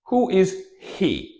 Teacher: He transforms into e.